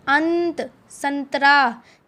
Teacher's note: अनुस्वर का उच्चारण नाक से किया जाता है। ठीक है, नाक से आती है इसकी साउंड, और इसका जो चिन्ह होता है वो किसी भी स्वर या व्यंजन के ऊपर बिंदु लगाया जाता है।